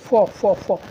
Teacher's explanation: और जो फ है ऊष्म संघर्षी है, दंतोष्ठ है, फ फ फ दंत प्लस ओष्ठ है। और यह क्या है दोस्तों आपका अघोष है, अघोष फ, इससे जो है कम स्वर तंत्र में कंपन नहीं हो रहा, जैसे फ स्वर तंत्र में कंपन तो नहीं हो रहा दोस्तों।